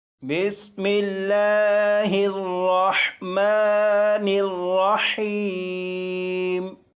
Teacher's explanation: را کے اوپر زبر ہے، اس لیے اس را کو پور یعنی موٹا پڑھیں گے۔ یہاں پر میم مشدد اور نون مشدد ہے، ان دونوں پر غنہ کر کے پڑھیں گے۔